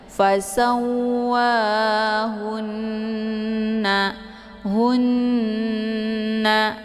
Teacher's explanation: Jadi cara bacanya itu didengungkan. Jadi ditekan haknya, kemudian ditahan suaranya 2 harakat ya sambil dileburkan suara ke dalam huruf nun ya. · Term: gunnah musyaddadah